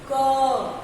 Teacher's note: जब क बोलते हैं तो लास्ट में ऐसा लगता है कि उसके साथ हमने अ भी बोला है